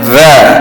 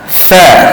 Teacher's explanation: Tadi jahar, bila jahar bunyi dia za, tapi bila hamas sa. Makhraj yang sama, gigit lidah, ujung lidah, tapi bunyi dia berbeza kerana sifatnya yang berbeza.